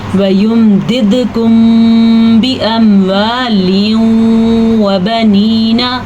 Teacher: میم پہ کسی قسم کا کوئی غنہ اور کوئی ہونٹ بند کرنے نہیں ہوتے وہاں پہ، ٹھیک ہے. میم ساکن کے بعد با آنے کی وجہ سے یہاں پہ ہم ہونٹ بند کر دیں گے، غنے کی کیفیت کریں گے · تنوین کے بعد یمون میں سے واو آیا ہوا ہے تو اس لیے یہاں پہ ادغام بالغنہ ہو رہا ہے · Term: اخفاء شفوی